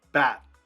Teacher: So notice my tongue is kind of behind my teeth. It's kind of on my alveolar ridge. You know that your gums on the top behind your teeth.